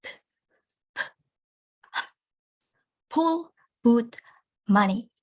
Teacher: Bilabials are produced by bringing the lips together